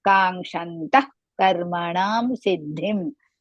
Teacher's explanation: ka is dirgha. There the nga should come. Ka ka ga nga is there.